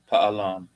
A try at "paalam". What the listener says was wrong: Don't make it fast. Paalam. Paalam.